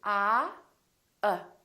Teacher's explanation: my lips are neutral oh they're not doing it very much and my tongue is also neutral in the back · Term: neutral sound